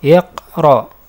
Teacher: huruf ra dibaca tafkhim atau tebal sebab berharokat fathah